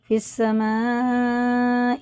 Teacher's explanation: مد متصل ہے، 5 الف کے برابر سے کھینچ کے پڑھنا ہے